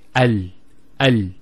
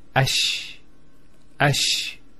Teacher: The actual points of articulation of the lam and the sheen are very close to each other.